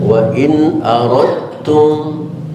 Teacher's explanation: Aradtum nggak ada tasydidnya, karena dalnya dihilangkan dimasukkan ke ta, maka timbul tasydid di atas ta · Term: idgham mutajanisin